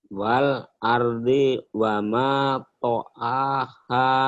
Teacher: Walnya ingat, walnya seperti ada jeda itu deh.